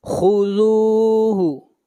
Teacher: خا کو موٹا پڑھیں گے، خا حروف مستعلیہ میں سے ہے۔ خذوہ، رال کو کھینچ کر پڑھیں گے ایک الف کے برابر، یہاں پر واو مدہ ہے۔